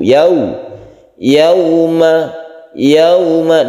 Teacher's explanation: Yau, yau ini menjadi u. Wawu membentuk huruf u. Ketika itu mulut kita mencucu. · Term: layin